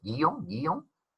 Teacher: tenemos un diptongo, porque la vocal que suena más en guión es la vocal O. Entonces, si tenemos un diptongo en la palabra guión, pues esa palabra es monosílaba.